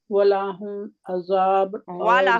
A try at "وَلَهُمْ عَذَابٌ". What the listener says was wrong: ولاہم نہیں ہے، الف لگا رہے ہیں آپ.